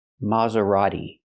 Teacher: And the t is not pronounced like t. It's pronounced d. A fast d.